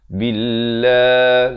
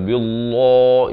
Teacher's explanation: A'u zi di hujung lidah. Billah, lafz jalalah dibaca nipis, dua harakat di sini.